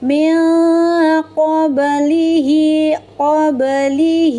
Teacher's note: Ba sukun di tengah ayat disebut qalqalah sugra. Cara membacanya bnya dipantulkan dengan jelas melalui mahrajnya kemudian banyak pantulannya ringan saja dan dilepas ya. · ba-nya dipantulkan dengan jelas melalui mahrajnya. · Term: qalqalah sughra